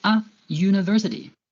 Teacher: The U at the beginning of university sounds like U, a consonant sound